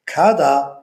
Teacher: yaʼni t harfi unliklar oʻrtasida boʻlganligi uchun d deb talaffuz qilindi